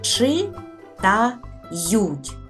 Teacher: складів в слові читають чи та ють три склади зверніть увагу в останньому складі два м'яких приголосних й і ть чи та ють буква ю означає тут два звуки й м'який